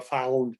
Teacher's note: that ow sound, the ah is pretty different. It starts farther back in the mouth, so you get more of a found and less of a found, like I have, which it's a piece of the Southern accent that I haven't lost.